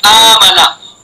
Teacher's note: اس پہلے حمزہ کی جو حرکت ہے زبر، اس حرکت کے موافق دوسرے حمزہ کو مد سے بدلنا ہے